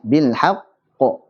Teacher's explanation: Qalqalah akbar yang paling besar, ini adalah saat bertasydid.